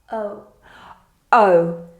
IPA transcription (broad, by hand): Əʊ